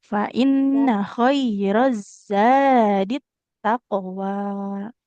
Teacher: Huruf zainya jangan jadi sin. Tidak khairos sadi, tapi fa inna khairoz zadit taqwa.